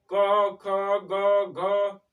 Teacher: क एकदम पूरा गले में टच कर रहा है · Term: स्पर्श व्यंजन